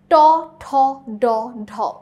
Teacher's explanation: উচ্চারণ করার সময় জিভ টাচ করছে মূর্ধাতে